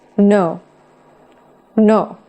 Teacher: Nếu mà no mà falling thì cũng là một cách phủ định, một cách chắc nịch